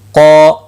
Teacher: قو الف مدہ ہے، ایک الف کے برابر کھینچ کر پڑھیں گے۔ قاف مستعلیہ ہے، پر پڑھا جائے گا، مستعلیہ کے ساتھ الف بھی آیا ہے، یہ بھی پر پڑھا جائے گا